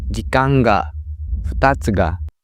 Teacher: in odaka, the particle that is followed by the word stays low.